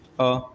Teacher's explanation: जीभ के मध्य यानी बीच वाले हिस्से से उच्चारित होते हैं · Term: मध्य स्वर